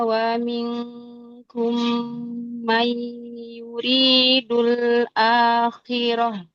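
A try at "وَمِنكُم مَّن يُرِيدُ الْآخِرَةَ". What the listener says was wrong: Ra-nya ditebalkan ya. Wa monyong lagi bibirnya, makhrajnya, tapi dilembutkan lagi.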